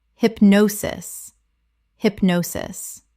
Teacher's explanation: Three syllables with the stress on the second.